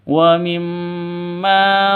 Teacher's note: Mim dengan tashdid berdiri sendiri, artinya berupa dengungan dua ketukan. Ghunnah Musyaddadah.